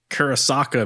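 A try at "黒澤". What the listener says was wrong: It's no K.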